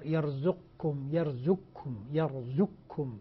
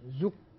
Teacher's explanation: تسقط القاف في الكاف ذاتا وصفة، لا يبقى للقاف أثر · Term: إدغام كامل